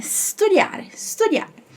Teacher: E aqui só mais uma diquinha de pronúncia com relação a esse S aí, que esse S ele é mudo, tá? A gente tem a tendência de colocar um I ou um E antes de falar studiare ou studiare. Mas é só o somzinho do s, tá? Então é studiare, studiare.